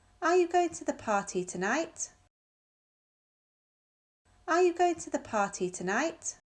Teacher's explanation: if we're checking information we think we already know our voice goes up at the end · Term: rising